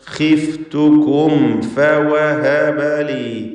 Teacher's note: ഖാ ഇസ്തിഅലാഇൻ്റെ തഫ്ഖീം ചെയ്യേണ്ട അക്ഷരമാണെങ്കിലും കസ്റ ആയതുകൊണ്ട് ഏറ്റവും കുറഞ്ഞ തഫ്ഖീമാണ്.